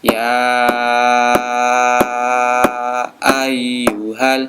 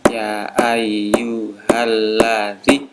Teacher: ini panjang sekali, ada 5 sampai 6 ketukan